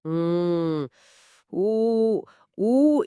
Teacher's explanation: ஊ ஊ இத சொல்லும்போது என்னோட உதடுகள் தானாகவே முன்னாடி குவியுது.